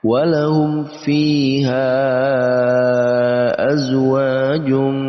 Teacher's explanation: bertemu dengan hamzah di lain kata, maka masuk dalam kategori mad jaiz munfasil, maka harus dibaca panjang dengan panjang 4 sampai 5 harokat. Walahum fiha azwajum, dibaca panjang 4 sampai 5 harokat.